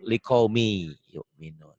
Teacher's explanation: hilang likaumi yu'minun bisa dikatakan idgham itu tulisan dan bacaan beda ditulisnya ada bunyi n-nya dibacanya n hilang melebur · Ditulisnya ada bunyi N-nya, dibacanya N-nya hilang, melebur.